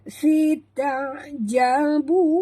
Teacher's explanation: Ta jangan tebal. Ta adalah huruf ringan, huruf istifal ya. Ta ain disebut betul-betul ya.